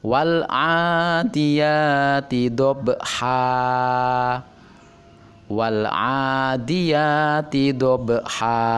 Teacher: dibaca panjang dua harakat karena termasuk mad iwad